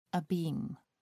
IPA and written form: əˈbiːm (abeam)